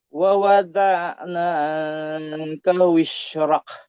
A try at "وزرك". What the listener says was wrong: Hindi siya wishrak, zay.